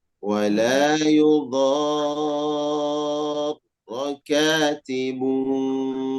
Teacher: Tanwin bertemu huruf waw disertai dengan dengung. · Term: idgham bigunnah